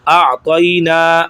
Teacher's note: ان, حمزہ زبر عین ا, تو زبر یا, طی, اعطی, یہاں پہ یا لین بن رہا ہے, نون زبر الف نا, اعطینا, الف مدہ ہے, اس کو 1 الف کے برابر کھینچیں گے